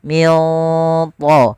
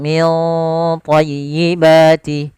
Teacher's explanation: ikhfanya langsung ke huruf ta, ditebalkan, maka ikhfanya agak tebal